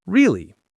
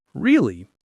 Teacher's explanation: Go up at the end like surprise. · Go down like you agree.